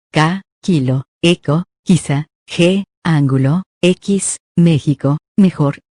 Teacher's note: se producen cuando el dorso de la lengua se aproxima al velo del paladar